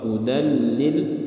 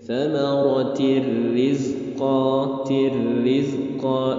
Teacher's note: jangan dilamakan, jadi langsung saja masuk tanpa dengung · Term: idgham bila gunnah